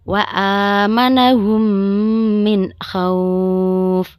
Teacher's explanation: makhrajnya yaitu mim sukun bertemu dengan huruf mim cara membacanya adalah memasukkan huruf mim ke dalam huruf mim disertai dengan suara guna sekitar dua harakat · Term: idgam misli